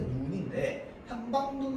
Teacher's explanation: 합성어나 파생어가 만들어지면서 둘째 음절 이하에 오게 되면 그때는 짧은 소리로 바뀝니다. 원래는 눈인데 한방눈 하면은 그냥 짧게 눈 발음이야.